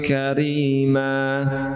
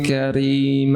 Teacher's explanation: Karima, itu berapa harakat? Hanya dua harakat, tidak lebih.